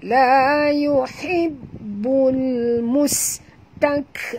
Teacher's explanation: Mus, bunyikan safir pada sin.